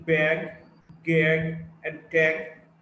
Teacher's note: G is a voiced velar plosive